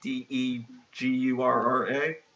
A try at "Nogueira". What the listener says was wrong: No, N.